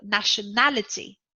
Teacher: the stressed syllable is the third syllable